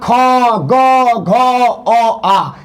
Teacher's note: कंठ से होता ख ग घ अ आ, इसका उच्चारण कंठ से होता है